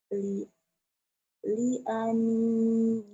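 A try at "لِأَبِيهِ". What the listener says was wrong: bukan liani. Ani. Bi Li abihi.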